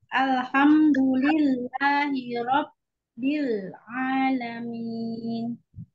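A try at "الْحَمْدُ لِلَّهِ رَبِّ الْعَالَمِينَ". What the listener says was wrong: tapi lamnya jangan kepantul, nggak boleh. Alhamdu, tapi al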